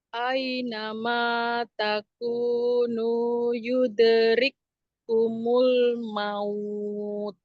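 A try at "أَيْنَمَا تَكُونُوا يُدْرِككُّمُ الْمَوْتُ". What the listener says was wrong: Ya, jangan yuderik tidak usah ngejut-ngejut. Yuderik kumul maut. Terus tidak tidak maut, tapi langsung kepada maut gitu ya.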